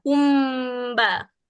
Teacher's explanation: mim dengan ba ni makhrajnya sama. Jadi dia bila kita dengung tu kita terus dengung kat mim saja. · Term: ikhfa syafawi